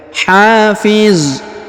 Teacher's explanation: Huruf ha dipanjangkan 2 harokat karena di depannya terdapat alif. Hafiz. Kemudian huruf za di ujung disukunkan atau dimatikan.